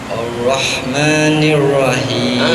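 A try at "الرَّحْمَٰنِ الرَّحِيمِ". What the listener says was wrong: Jangan Rahim, Rahim sama dengan Rahman. Ar-Rahim sama. Jangan anak tirikan Ar-Rahim itu. Jangan dianak tirikan, ya.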